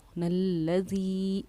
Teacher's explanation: یہاں حروف مدہ کے بعد حمزہ کیونکہ دوسرے کلمے میں ہے تو یہاں ہم 2.5 الف کی مقدار کے برابر اس کو کھینچیں گے، کس کو؟ الذی کو، نلذی، 2.5 الف کی مقدار کے برابر ہم نے اس کو کھینچا، نام ہے اس کا مد منفصل۔